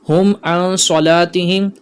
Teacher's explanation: عن صلاتہم یہاں پر اخفا کا قاعدہ لگ رہا ہے، غنہ کیا جائے گا، اس بات کا خیال رکھیے گا. · میم ساکن کا قاعدہ یعنی اظہار شفوی کا قاعدہ، یہاں غنہ نہیں کریں گے